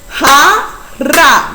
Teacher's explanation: La sílaba ja, que se pronuncia con mayor intensidad de voz. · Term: sílaba tónica